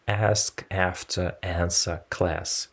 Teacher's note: speakers of Northern English pronounce these words with a trap vowel · Traditionally, speakers of the Southern English dialect pronounce these words with the bath vowel, while speakers of Northern English pronounce these words with the trap vowel